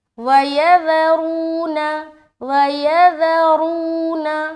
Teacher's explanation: ذال کو بغیر سیٹی کے باریک اور اس کے جسٹ بعد را کو موٹا رکھیں گے